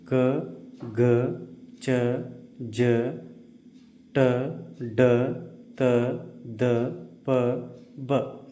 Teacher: ಕಡಿಮೆ ಉಸಿರಿನಿಂದ ಉಚ್ಚರಿಸಲ್ಪಡುವ ಅಕ್ಷರಗಳಿಗೆ ಅಲ್ಪಪ್ರಾಣ ಅಂತ ಕರಿತೀವಿ.